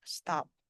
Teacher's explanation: Bunyi P-nya itu kan tidak aspirated ini ya.